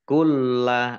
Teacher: huruf bertasydid dibaca ada tekanan gitu kulla ada tekan lamnya kulla Lam tasydid dibaca dobel lamnya